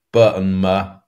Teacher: they're both said with the lips, at the front of the mouth